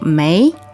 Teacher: so may second tone right it's rising